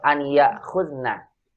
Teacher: hamzah yang sukun, maka makhraj kita kan di bawah tenggorokan paling bawah